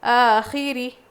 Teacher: آخِرِ، رو باریک ہوگی، زیر ہے